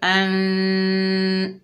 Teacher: इक़फ़ा की क्या मानी है? यानी नून का कुछ हिस्सा ज़ाहिर होगा और कुछ हिस्सा छुपा हुआ होगा